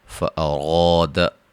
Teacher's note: را کو موٹا الف مدہ